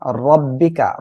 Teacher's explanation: রব্বিকা র মোটা করে পড়বেন